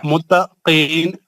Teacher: قاف حروف مستعلیہ ہے موٹا پڑھیں گے